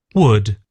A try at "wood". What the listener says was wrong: Ah, getting better, I think. Getting better.